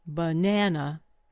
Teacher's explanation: The first and last vowels become weak. They turn into schwas. Only the middle syllable receives strong stress.